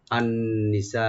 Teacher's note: সিনের উপরে যেটা মাদ আছে এখানে আমরা 4 আলিফ টানবো, মাদ্দে মুত্তাসিল